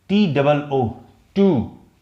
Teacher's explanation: इसको स्ट्रेच करते हैं, जिसको हिंदी में हम कहेंगे बड़ी ऊ